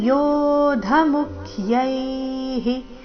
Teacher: ಯೋಧ ಧ ಮಹಾಪ್ರಾಣ ರಸ್ವ